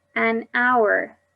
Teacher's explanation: The H at the beginning of hour is silent.